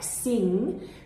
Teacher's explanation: that NG sound achieves the correct tongue movement that we would like to see, the correct contact. It's the back part of the tongue raising up.